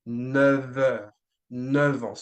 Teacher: the F would turn into a V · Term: liaison